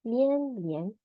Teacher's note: li plus yan, second tone, 连. 续 will be like fourth tone, 续.